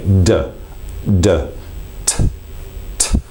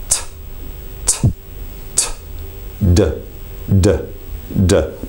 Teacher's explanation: It's the tip of the tongue working against the area just behind the top front teeth. It's an area called the alveolar ridge.